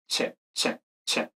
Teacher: una africada ocluconstrictiva tiene una fase oclusiva, concretamente una T, y luego esta fase fricativa. Entonces, como tiene dos fases, realmente tiene dos símbolos, ¿no?